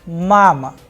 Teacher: in case of mama, the sound of first vowel a is higher, whereas the sound of second a is lower